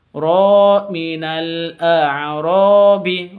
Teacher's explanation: ro panjang 2 harokat karena alif diawali dengan fathah